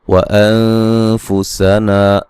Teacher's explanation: نون ساکن کا اخفاء باریک. نا الف مدہ.